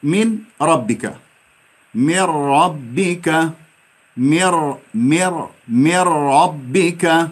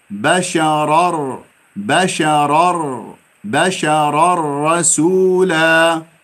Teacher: يعني لما نقول إدغام بغير غنة تأكل النون